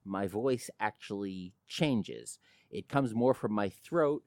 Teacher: my voice actually changes it comes more from my throat and less from my diaphragm and you can actually hear a little more vocal fry